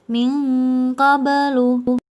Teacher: Suara dengungnya lebih tinggi daripada suara samarnya. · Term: ikhfa a'la